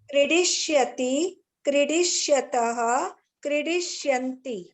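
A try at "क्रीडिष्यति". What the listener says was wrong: You are still saying the hrasva ikara for kra. Kridishyati you are telling. Kridishyati.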